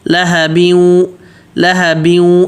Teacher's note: بیوں میں غنہ ہوگا، بیوں غنہ ہوگا، غنہ ناک میں آواز چھپانے کو بولتے ہیں ، تو اب غنہ ہوگا کیونکہ تنوین بیوں پہ 2 تنوین